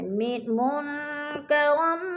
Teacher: نون ساکن کے بعد کاف حروف اخفا میں سے ہے تو ادھر اخفا کریں گے، آواز کو ناک میں چھپا کر پڑھیں گے